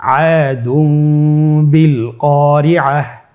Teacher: এখানে দালের উপর তানবিন রয়েছে এবং তানবিনের উপরে ছোট্ট একটি মিম রয়েছে। তাহলে আমরা যেটি করব যে তানবিনকে মিম দ্বারা পরিবর্তন করে গুন্নার সহিত পড়ব